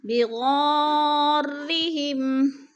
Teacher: مد متصل ہے، 4 الفی مد ہے، 4 الف کے برابر ہم نے اس کو کھینچ کر پڑھنا ہے. اور ہم پہ اظہار شفوی ہے.